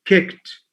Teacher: 4 sounds. So the first k sound is followed by a small h to show that it's aspirated.